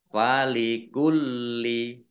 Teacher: lam tasdid dibaca dobel